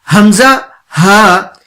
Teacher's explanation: ان میں سے 2 حمزہ، ہا، یہ اقصا الگ سے ادا ہوتے ہیں، یعنی حلق کا وہ حصہ جو سینے کے قریب ہے وہاں سے حمزہ ہا ادا ہوتا ہے